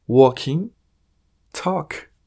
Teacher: en este caso la letra l no suena